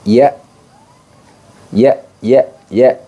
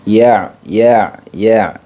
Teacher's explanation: Sedangkan ain, teman-teman, dia memiliki sifat jahar, nafas tertahan, kemudian dia memiliki sifat tawassut. Tawassut itu sedikit tertahan. Jadi suaranya tidak murni tertahan, tapi sedikit tertahan.